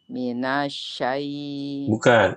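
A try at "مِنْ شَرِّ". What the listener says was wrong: Bukan minasyai. Nanya panjang, tidak. Itu namanya tawallud, kata Syekh Mahir Al-Munajjid. Tawallud itu jadi Ibu nanya tuh memanjang sebelum masuk ke shin yang bertasydid. Minasyai. Nanash. Nanash. cepat. Nanash.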